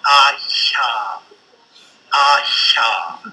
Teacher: a narrowing in the roof of the mouth, that is in the palatal region, we get something like ah-sha, ah-sha.